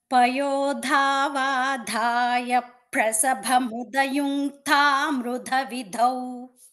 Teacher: ముదయ ముదయుంతా మృదవిదౌ ఆ ప్రసభలో ఎక్కువ పాలు చెప్పాలనేటువంటి ఆతృతతో మహాప్రాణం చెప్పేసారు మహాప్రాణం రాకుండా ద్విత్వం మాత్రమే చెప్పాలి